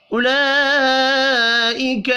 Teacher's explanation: لام کے اوپر بڑی مد ہے، 5 الف کے برابر کھینچ کر پڑھنا ہے